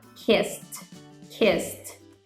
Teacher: the S sound in the end is unvoiced and because of that the past tense of kiss should sound